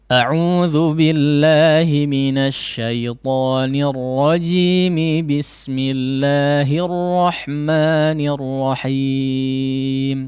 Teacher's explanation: Namun ketika dia diwasal maka tidak ada sukun arid di situ ya, sukun pengganti tidak ada, karena jadi hidup rajimi ya, sehingga menjadi 2 harakat. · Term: mad tabi'i